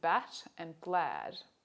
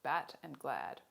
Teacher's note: quite low though not at the bottom of the chart and we can refer to it as a low front unrounded vowel the symbol for it is an a and an e joined